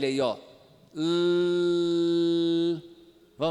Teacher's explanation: está passando porque as bordas laterais da língua estão a baixadas e o ar passa pelos lados · Mas o caso dos laterais é quando no centro há uma oclusão total, mas as bordas da língua estão abaixadas e o ar sai então pelos lados. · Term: lateral